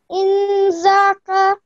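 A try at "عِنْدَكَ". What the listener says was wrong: Okay, when we the last letter should be mute when we make a stop there, so indak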